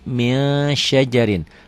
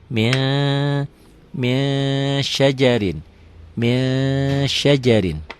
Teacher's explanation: Min ditulisnya, dibacanya jadi min syajarin. Bukan hanya n ditambah g aja, ditahan juga, ada ditahan. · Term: ikhfa